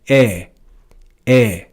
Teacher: So these two diphthongs, ae and oe, are read in church Latin with the same sound, e, e.